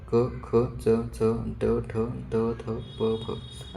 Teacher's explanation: हे स्पर्श व्यंजने आहेत. जे बोलताना अवयव एकमेकाला स्पर्श होतात.